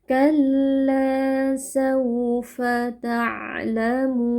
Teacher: kalla di sini terdapat ee alif yang sebelumnya fathah. Nah, ini merupakan mad thbi'i. Kita baca panjang dua harakat.